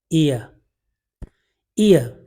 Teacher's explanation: diphthong है ईयर, short ई और श्व, ईयर, ईयर